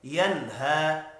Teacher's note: نون ساکن کے بعد حروف حلقی ہے، اظہار حلقی ہوگا، غنہ نہیں ہوگا۔ ینہا، ہا کے اوپر کھڑی زبر ہے، ایک الف کے برابر کھینچ کر بھی پڑھنا ہے۔